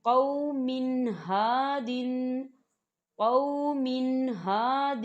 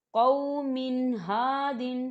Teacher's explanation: تنوین ہے، اور تنوین کے بعد ہا آ رہا ہے۔ ہا جو ہے یہ حروف ہلکی میں سے ہے، تو یہاں پر غنہ نہیں ہوگا